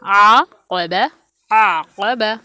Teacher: आ को लंबा करेंगे, 2 काउंट करेंगे और फिर क़ौफ़ को 1 हरकत, बा पर भी 1 हरकत